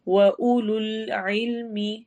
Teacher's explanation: عین حروف حلقی میں سے ہے، حلق کے درمیان سے، تھروٹ لیٹرز میں درمیان سے ادا ہونے والا حرف ہے۔